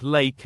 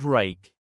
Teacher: For the L sound, the tip of your tongue makes firm contact behind your upper teeth. For the R sound, the tongue pulls back and does not make contact.